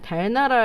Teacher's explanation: 유음이 공기가 흘러나가는 그런 소리이구나, 혀 옆으로 흘러나가는구나